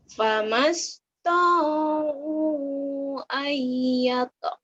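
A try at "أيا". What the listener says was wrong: Bukan kol-kolah. Ayyauz. Bukan kol-kolah ya. Ayyauz haruh. Ayyad haruh.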